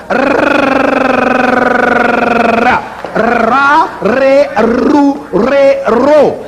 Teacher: That's the way it's made in English, but in East European languages, the R sound would be made as an apico-alveolar trill. That's the tip of the tongue against the alveolar ridge, and you get a ra, re, ru, re, ro.